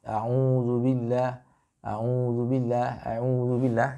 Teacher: A'u itu masih masuk ke dalam hidung. A'udzubillah, a'udzubillah, a'udzubillah, yaitu nanti masuknya ke khaisum semua.